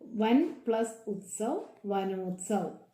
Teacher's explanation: ആയും ഊയും കൂടെ ചേർന്ന് ഓ എന്നുള്ള ശബ്ദത്തിൽ വരുന്നു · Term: സന്ധി